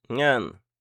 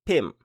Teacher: la syllabe est vivante puisqu'elle se termine par une sonore, la consonne initiale est basse, donc le ton est plat